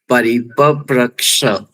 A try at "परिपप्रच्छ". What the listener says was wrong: छ इति नास्ति, छ इज नॉट देयर सर, छ अब छी बोलते हो, छी किसी चीज पसंद नहीं, हाँ बस वही छी के ई निकाल दीजिए, छा, हाँ परिपप्रच्छ, छा,